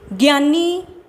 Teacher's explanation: ਗਿਆਨੀ ਸ਼ਬਦ ਦੇ ਵਿੱਚ ਯਈਆ ਵਿਅੰਜਨ ਧੁਨੀ ਆ ਸਵਰ ਧੁਨੀ ਵਿੱਚ ਤਬਦੀਲ ਹੋ ਗਈ